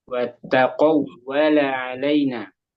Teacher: Kurang penekanan. Kurang tasdidnya. Ya, ditekan di tasjidnya di waw. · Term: waw tasjid